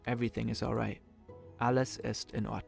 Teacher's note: languages the words of a sentence are spoken in a flow in German sometimes there's a mini pause before each individual word